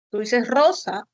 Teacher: tú dices Rosa como una vibrante múltiple